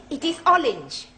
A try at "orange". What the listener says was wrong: You really must work at those R sounds.